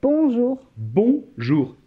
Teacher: s'il vous plaît, ne prononcez pas le N. C'est une nasale. O et N forment la nasale ON.